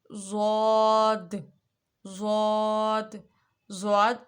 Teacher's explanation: اس کو ہم اس کی ادائیگی ہم لوگوں نے اس کو موٹا پڑھنا ہے، اور دوسرا اس کا مخرج یہ ہے کہ اس میں کیا کیا چیز استعمال ہوگی، وہ ہے ایک زبان کی کروٹ اور اوپر کی 5 داڑیں۔ جب زبان کی کروٹ اوپر کی 5 داڑوں سے لگے گی تو ضاد ادا ہوگا۔